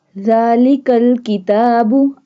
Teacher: Zal pronounced from the tip of the tongue touching the inner edges of the top 2 front teeth. जुबान को अगले 2 दांतों की नोक से मिलाने से जाल अदा होता है।